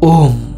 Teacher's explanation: ম বর্গীয় শব্দের শেষ শব্দ। উহার উচ্চারণ করিতে হইলে ওষ্ঠদ্বয় বন্ধ করিতে হয়।